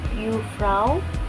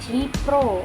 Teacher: Kemudian ada Jufrau menjadi Jipro yang artinya ibu guru TK atau SD. Terjadi perubahan diftong au menjadi bunyi vokal tunggal yaitu o.